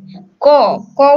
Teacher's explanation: ক উচ্চারণের পরে কিন্তু একটা অ উচ্চারিত হয়, ক ক যোগ অ, তখনই এটা ক হয়।